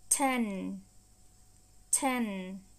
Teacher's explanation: Gọi vậy ha, là có nghĩa là các bạn đưa cái đầu lưỡi lên trên, hàm răng trên bên trong á, các bạn các bạn muốn đọc chữ N ra mà nó không có ra được, bởi vì là cái lưỡi của các bạn, đầu lưỡi của các bạn nó chạm ở hàm răng trên bên trong á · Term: âm mũi